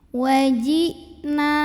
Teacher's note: Wajina, na matobi'i dhahiri, karena ada alif didahului baris fathah, maka dipanjangkan nunnya 2 harokat